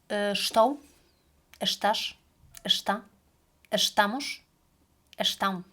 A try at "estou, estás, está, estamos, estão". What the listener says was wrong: You like to exaggerate the estou, estás, estou. Less energy, okay?